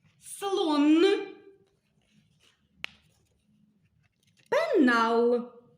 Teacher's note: звук н можемо вимовляти твердо н наприклад у словах слон пенал це твердий приголосний звук н